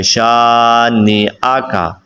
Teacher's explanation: شین الف زبر شا، اس کو تھوڑا سا لمبا کریں گے